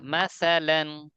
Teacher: উচ্চারণ কোথা থেকে? জিবার আগে দাঁতের আগা।